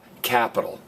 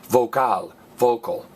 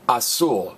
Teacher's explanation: All of these end in lizard, L-Z-R-D. And I want you to notice in every one of them, it's the very last vowel that gets stressed. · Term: last vowel gets stressed